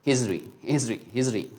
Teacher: t okay so which means that the flap t means uh the sound of the t will become the sound of d but it is not exactly a d